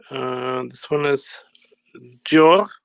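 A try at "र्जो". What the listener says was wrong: Rjo. The Repa is pronounced first. Because it has appeared as the curve above. So it is the Repa that is to be pronounced first. Then the Jakara, then the Yo.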